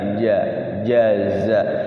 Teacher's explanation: huruf Jim itu jahr ya jahr hurufnya di tengah-tengah lidah Ja jaza Kalau Za dia tipis ya jaza Za Za ya